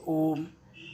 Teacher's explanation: प्लुप्त स्वर को बोलने में जो है तिगुना टाइम लगता है, तिगुना समय लगता है